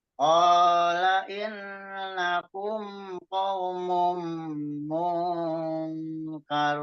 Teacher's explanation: Nah, jadi di mungnya itu eng tipis, mung karun. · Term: ikhfa